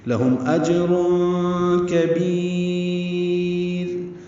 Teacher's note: کاف باریک ہے، با کو لمبا کریں گے، را ساکن وقفاً، یا ساکن کے بعد را ساکن ہونے کی وجہ سے را باریک ہو جائے گی · کی وجہ سے را باریک ہو جائے گی، لہم اجر کبیر، مد عارض سکون بنا کر لمبا کر کے را پہ وقف کریں گے اور را کو باریک پڑھیں گے